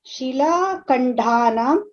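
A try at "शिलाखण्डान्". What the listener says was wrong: You are saying Shilakandhan. It is Shilakandhan. The Mahaprana is for K, not for D. Shilakandhan. The thing is, you are saying Shilakandhan. It is Shilakandhan. Kha is Mahaprana, Da is Alpaprana. And we should not say both as Mahaprana. Kha is Mahaprana, Da is Alpaprana.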